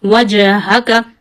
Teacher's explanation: Jim is also a qulqalah letter, so when jim becomes sakin, you clearly show movement in jim voice.